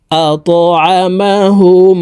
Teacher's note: তাশদি মিমের সাথে গুন্নার সহিত পড়বো